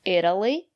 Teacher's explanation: the syllable after the letter T is not stressed will pronounce the letter t as a fast de